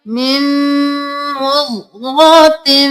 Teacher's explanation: मिन नहीं करना, मीम को मीम के साथ मिलाना है, गुन्ना भी करना है।